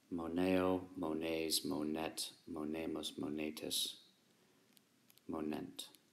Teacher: the long E remains firm with the O, and it is not swallowed up